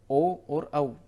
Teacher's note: ये कंठोष्ठ हैं जो कंठ और ओष्ठ से उच्चारित होते हैं